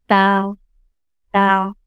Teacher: जबान की नोक ऊपर की जो दांत हैं उसको सनाया उलिया कहते हैं, सामने के 2 दांत उस पर टच होगी।